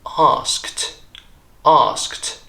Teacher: there are three voiceless consonants there in a group once again a consonant cluster